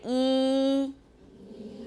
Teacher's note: feel it again you can suck in suck air in and you will feel cool air along your tongue where it's very close to to the hard palate